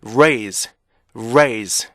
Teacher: 어 성대 울리는 소리가 많이 약화가 돼요 그래서 r r 이렇게 들리게 돼요 거의 S 바처럼 원도 실제